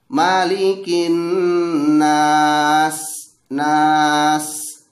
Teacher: huruf yang ada sedikit desis di situ dan mengalir udara didalamnya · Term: huruf Hamas